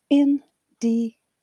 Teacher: It has four syllables, where first syllable carries the secondary stress. It means that you should put some power into this part of the word.